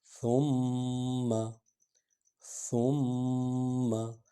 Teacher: ثم، ثم، سے کو جو ہے یہ ثنایا الیہ، یعنی سامنے والے اوپر والے جو 2 دانت ہیں ان کے ساتھ زبان آ کر تھوڑی سی ٹکرائے گی اور سے جو ہے نرم انداز میں ادا ہوتا ہے۔